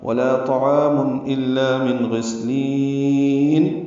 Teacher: سین ساکن ہے اس پہ ہمس ہے